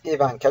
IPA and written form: ɪˈvɑːŋkə (Ivanka)